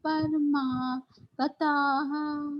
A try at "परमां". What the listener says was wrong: ये परमा नहीं, हाँ अम्मा, ये नहीं, paramam, paramam, full